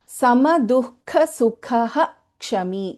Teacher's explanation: When there is a Visarga and then we have the letter Ksha, then we pronounce the complete Visarga in this case.